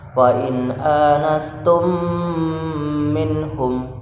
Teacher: idgham mimi atau idgham mutamatsilan, harus dengung. Fa in anastum dengung ya, karena mim bertemu mim, idgham mimi.